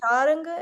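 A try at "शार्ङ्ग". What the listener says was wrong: So, sometimes when we pronounce these things, we may like almost add an extra syllable if if it's tricky. So we don't want to be in the habit of saying something like sharenge or sharange.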